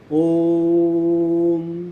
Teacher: यानी ओ जो है वो मोर देन 3 टाइम्स में बोला जाएगा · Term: प्लुत स्वर